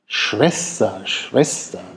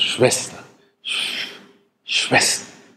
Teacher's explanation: Da gibt es Sprecher, die also keinen labiodentalen zweiten Laut bilden, die sagen also nicht Schwester, sondern die sagen Schwester. Also da strömt die Luft zwischen den Lippen durch und der Laut ist dann stimmlos. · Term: stimmlosen Frikativ